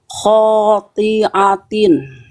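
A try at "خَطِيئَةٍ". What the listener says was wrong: Oke, huruf A hamzah jangan jadi ain tapi. Khotiatin. Jangan jadi ain hamzahnya, itu hamzah.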